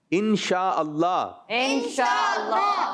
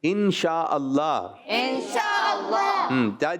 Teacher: تھوڑا لفظ اللہ کا لام پر کر کے پڑھیں گے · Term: لام موٹا